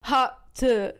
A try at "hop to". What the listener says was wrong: You gotta put like an emphasis on it, like to.